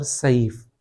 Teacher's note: سین کی صفت میں موٹا پڑھنا نہیں ہے